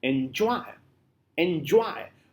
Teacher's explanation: it consists of two syllables where the first is unstressed and second is stressed